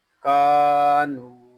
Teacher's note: یہاں کاف کو ایک الف تک کھینچ کر پڑھیں گے اور نون کو بھی ہم ایک الف تک کھینچ کر پڑھیں گے کاف میں علی مدہ ہو رہا ہے اور نون پہ واو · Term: واو مدہ